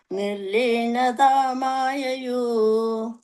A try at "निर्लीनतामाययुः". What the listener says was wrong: That last word, ayayuhu, visarga is there.